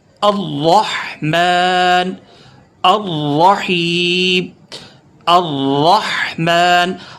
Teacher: را پر تھوڑا سا روک کر سختی سے پڑھیں گے، ٹھیک ہے، تشدید کی وجہ سے